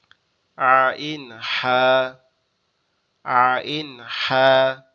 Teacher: কণ্ঠনালীর মধ্যখান হইতে উচ্চারিত হয় আইন হা